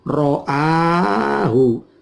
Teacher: nunnya tidak terbaca langsung masuk ke ro. Namanya idgham bila gunnah.